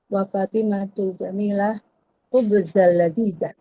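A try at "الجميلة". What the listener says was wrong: Aywa. Harakatnya harus wadih di akhirnya.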